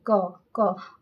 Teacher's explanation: क वर्ग देखिए इसमें न तालु टच कर रहा है न दांत कर रहा है, सिर्फ जीभ थोड़ा सा अपने आप में हिल रहा है। क और ये अंदर से आवाज आ रहा है कंठ से